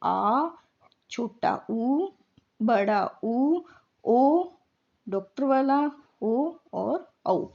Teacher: पश्च स्वर, जिसमें जीभ का पिछला भाग सक्रिय रहता है